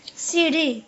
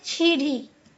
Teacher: स का छ और च का स प्रयोग इसमें होता है।